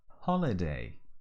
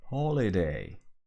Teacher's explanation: Almost like holiday, with a little aspiration in the beginning. Holiday. Even some people in some regions of the UK and also in the US, people pronounce it with an H dropping style.